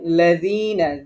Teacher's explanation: যিতে এক আলিফ টান হবে।